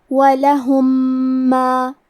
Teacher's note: دوسرے میم میں ملا کے ایک ہی میم غنہ اور تشدید کے ساتھ پڑھیں گے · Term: ادغام متماثلین صغیر